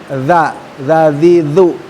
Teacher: Huruf za, huruf yang secara makhraj pengucapannya adalah ujung lidah dikeluarkan dan digigit ya, tidak terlalu banyak. Za ya, jadi za lidahnya dikeluarkan dan digigit.